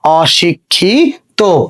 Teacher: দেখো এখানে ক্ষিয় আছে, আমরা জানি ক্ষিয় এর উচ্চারণ কি হয়ে যায়, ক্ষিয় উচ্চারণ কয় হসন্ত খ হয়ে যায় যদি শব্দের মাঝে অথবা শব্দের শেষে থাকে। তাহলে আমরা এখানে লিখলাম কয় হসন্ত, কয় হসন্ত খ।